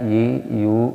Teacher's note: tengah ya kita rasakan sendiri pasti terasa di tengah ini ya di lidah bagian tengah ya bersama dengan langit-langit bagian tengah juga ya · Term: ya hidup